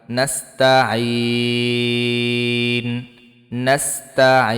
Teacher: অক্ফ করলে তিন আলিফ টান